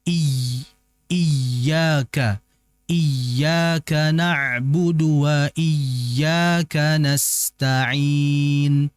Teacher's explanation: Annabr ini seperti hentakan.